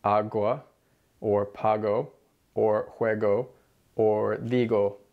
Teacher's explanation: This hard G sound is what a lot of English speakers transfer from English into Spanish. So from English speakers, you hear agua, or pago, or juego, or digo, with a hard G sound in all those words.